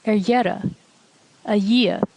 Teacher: In a slender context, it sounds like y